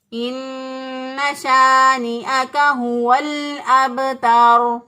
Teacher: را کو موٹا پڑھنا ہے، باریک نہیں پڑھنا، ہم اس کو درست طور پہ ایسے پڑھیں گے، ان شانئک هو الابتر۔